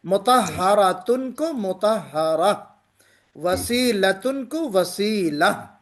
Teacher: اس گول تا کو ہم ہا سے بدل دیں گے